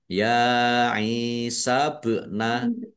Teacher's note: Dibaca panjang dua harakat. Ba sukun bacaan qalqalah dibaca memantul ditampakkan pantulannya